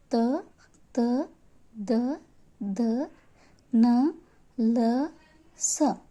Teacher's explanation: ದಂತ್ಯಗಳು ಅಂದರೆ ಹಲ್ಲಿನ ಸಹಾಯದಿಂದ ಉಚ್ಚರಿಸಲ್ಪಡುವ ಅಕ್ಷರಗಳನ್ನು ದಂತ್ಯಗಳು ಎನ್ನುವರು